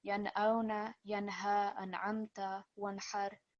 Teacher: the sound of the nun sakin or the tanveen will be clear, so there will be no prolonged nasal sound